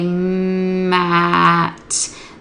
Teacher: their lips are together on m their mouth is going to open on a